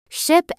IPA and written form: ʃɪp (ship)